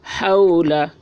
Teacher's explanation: واو ساکن سے پہلے زبر ہے، واو لین ہوا، اس لیے واو لین کو نرم آواز کے ساتھ جلد پڑھیں، معروف پڑھیں، مجہول آواز سے بچیں